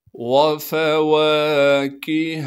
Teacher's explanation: واو کو بغیر کھینچے پڑھنا ہے، فا کو بھی بغیر کھینچے پڑھیں گے۔